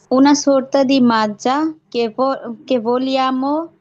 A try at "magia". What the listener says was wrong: এটা এটা হবে মাজা না, এটা মাজিয়া হবে। মূলত এই উচ্চারণটা একটু ব্যতিক্রম, মাজিয়া হবে।